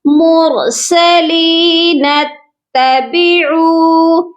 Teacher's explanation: اگر تو ہم اس کو ملا کے پڑھتے, پھر ہم پڑھتے مرسلین اتبعوا, پھر ہم اس الف کو نہیں پڑھتے. لیکن اگر ہم نے یہاں پر سٹاپ کر لیا ہے, پھر اس الف کو ہم پڑھیں گے اور زیر کے ساتھ پڑھیں گے.